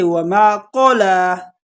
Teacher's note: اور قلا، قاف کو موٹا، اکثر لوگ مسٹیک کرتے ہیں، اس کو کلا پڑھتے ہیں